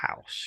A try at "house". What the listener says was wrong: so pronounce the h so right